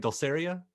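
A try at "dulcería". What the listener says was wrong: Dulceria. Casi, no, es casi, dulceria. Dulceria. You just put the accent in the wrong place. Dulceria.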